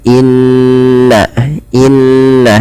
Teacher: tasydid maka di sini ketika Nun ada atau mim berharakat tasdid maka ditahan suaranya sepanjang dua harakat Inna Inna tidak langsung dilepaskan Inna hadza tidak dibaca Inna hadza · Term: gunah